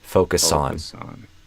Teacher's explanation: I think you did a Z here, which makes it sound like Zon, but I would do an S, so it'll sound more like Son